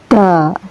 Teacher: Kita melafalkan huruf dal ini dari ujung lidah yang sedikit dijepit antara dua gigi seri atas dan bawah.